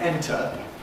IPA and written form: ˈentə (enter)